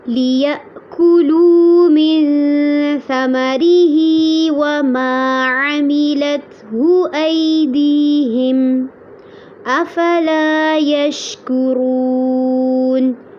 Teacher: وَمَا عَمِلَتْهُ تا پہ آپ نے دھیان رکھنا ہے کہ جھٹکا نہ ہو. ایدیہم میں یا ساکن سے پہلے زبر ہے، یہاں پر لین ہوگا اور اس کو نرمی سے پڑھنا ہے